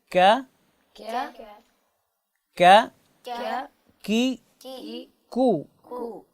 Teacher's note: زبان کی جڑ کو جب آپ تالو کے سخت حصے سے لگائیں گے تو آٹومیٹیکلی یہ حرف کاف ادا ہوگا